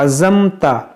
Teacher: یہاں پر دیکھیں عین ہے عزمت. عین کو بیچ حلق سے ادا کیا جاتا ہے.